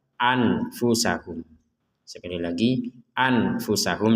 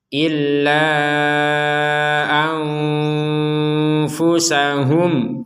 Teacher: nun sukun bertemu dengan Fa kita membacanya dengan samar Jangan dibaca jelas